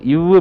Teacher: மேல்வாய் பல்லை கீழுதடு பொருந்துவதால்